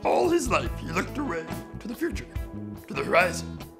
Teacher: There is also a bit of poetic melody and rhythm to his speech, broken up into these small segments of a few words, with the last of the segments often dropping in pitch.